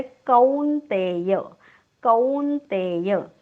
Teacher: पहिली दोन्ही अक्षरं दीर्घ आहेत